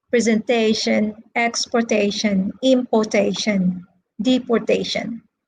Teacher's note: ending in ion sean tion asian those are nouns okay and they are stressed on the third syllable